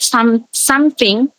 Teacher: instead of something the sound p is inserted between um and t